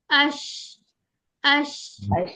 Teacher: जबान में एक होता है हमारा दरमियानी हिस्सा, ठीक है। दरमियानी हिस्से से जीम शीन और या अदा होता है।